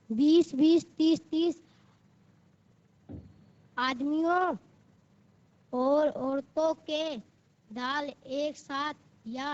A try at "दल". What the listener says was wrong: दाल नहीं, दल, दल, द ल